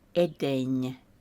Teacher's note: NY is a single nye sound, not edeni.